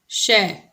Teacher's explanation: तालव्य, यानी कि तालु से बोला जाएगा। ये तालु का मतलब जीभ के ऊपर, यानी कि हमारे मुंह के अंदर जब हम आ करेंगे तो जो ऊपर छत है वो तालु कहलाती है। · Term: तालव्य श